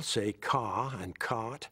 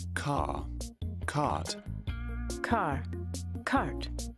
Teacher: English people say ca and cot, where we say car and cart with an R in them.